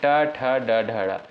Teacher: जो ट वर्ग के अंतर्गत जो भी वर्ण आते हैं उनका उच्चारण स्थान किससे होता है भाई? मूर्धा से होता है